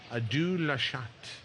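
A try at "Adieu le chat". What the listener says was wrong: Le Chat. Le Chat. You don't pronounce the T.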